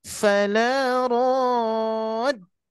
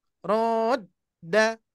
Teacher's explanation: Dal masih termasuk syiddah ya, tertahan.